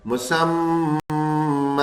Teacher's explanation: میم تشدید تھا غنہ کرا اس نے، اور کھڑا زبر ہے تو وہی ایک زبر کی آواز اور الف آگے ملا دیا، یعنی یہ اوپر اور نیچے یہ دونوں ایک ہی طرح کام کر رہے ہیں۔